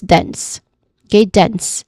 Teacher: Dense with a clear hissing sound in the end.